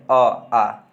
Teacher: कंठ से क्या क्या बोले जाते हैं? तो कंठ से सबसे पहले अ आ